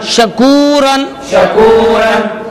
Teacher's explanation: حضرت یہاں پر واو مدہ کا قاعدہ ہو رہا ہے کیونکہ یہاں پہ واو ساکن سے پہلے پیش آ رہا ہے, واو مدہ کو ایک الف کے برابر کھینچ کر پڑھیں گے